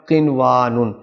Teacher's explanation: نون ساکن کے بعد واو ہے، لیکن یہاں پر کوئی غنہ نہیں ہوگا، یہ واو پڑھا جائے گا